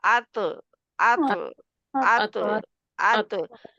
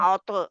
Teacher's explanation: जो मसूड़ों का उबरा हुआ हिस्सा है, दरमियान में लाइन सी बम्पी पार्ट, उससे जाके लगती है जुबान की नोक।